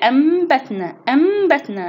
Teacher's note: أقلب النون الساكنة أو التنوين إلى ميما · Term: حكم الإقلاب